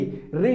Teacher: री जो होती है इसमें हमारी जुबान जो होती है वो मुड़ जाती है, यानी कि जो तालब के आगे का एरिया है उसको हम मूर्धन्य कहते हैं, री।